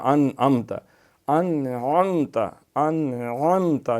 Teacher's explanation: عین بھی گلے سے، الف کے ساتھ یہ حمزہ ہے